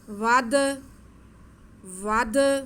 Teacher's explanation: مم مثلہ وادعوا، واو پر زبر ہے، واو آگے دال ساکن ہے، دال حروف قلقلہ میں سے ہے، تو اس کے بعد کو ہم تھوڑا ہلا کے پڑھیں گے، واو کو دال کے ساتھ ملا لیں گے.